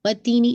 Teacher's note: تو وَالتِّینِ، تی کو آپ نے دیکھیے 2 کاؤنٹ اسٹریچ کرنا ہے کیونکہ یا مدیہ ہے نا، اور نون کی کسرہ شارپ رکھیے گا، نی، ٹھیک ہے، پورا آپ کو واضح ساؤنڈ کمپلیٹ ہونا چاہیے